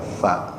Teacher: Ta itu ujung lidahnya sedikit digigit. Tsa kayak orang cadel ya.